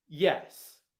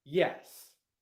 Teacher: If I answer a question with a downwards intonation pattern, where I go down, okay, that implies certainty and finality.